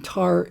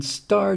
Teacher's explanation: The T in tar is aspirated, meaning it comes out with a puff of air. The T in star doesn't have that.